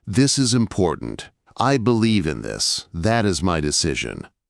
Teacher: Each time, drop the tone at the very end. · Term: downward inflection